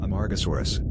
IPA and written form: əˌmɑːrɡəˈsɔːrəs (Amargasaurus)